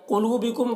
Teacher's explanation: قوف کو پر پڑھیں گے اور یہاں پر واو مدہ ہے، ایک الف کے برابر کھینچ کر پڑھیں گے